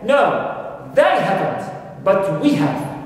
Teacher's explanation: they and we, although they are pronouns, they are grammar words, but when they are emphasized and pointed to by the speaker through his emphasis, they become stressed and they have strong form